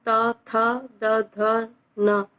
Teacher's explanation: जैसे कि tip of द tongue से हम त, थ, द, ध, न, ये साउंड निकालने की कोशिश करेंगे